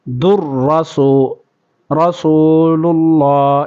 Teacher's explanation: دال کو را کے ساتھ ملائیں گے